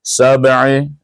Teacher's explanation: Ba adalah huruf qalqalah, dibaca dengan qalqalah sugra kerana kita menyambung dengan ain.